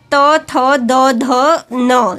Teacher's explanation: त वर्ग त, थ, द, ध, न, दांत, दांत से बोला जाता है। दांत से इसका उच्चारण दांत के पास से होता है।